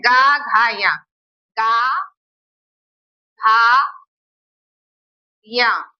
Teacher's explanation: इनके उच्चारण में हमारे गले में कंपन हो रहा है